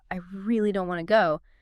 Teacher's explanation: stretching out and emphasizing that word really tells you immediately that their reluctance is very strong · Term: drawing it out